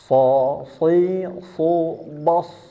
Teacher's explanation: Ingat ya, cara mengucapkan huruf shad, pangkal lidahnya dinaikkan, tengahnya agak maju sedikit, naik juga ke langit-langit mulut, ujung lidahnya ke bawah, dan tambahan suara di antara dua bibir.